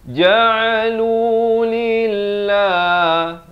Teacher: lafz jalalah dibaca nipis 2 harakat.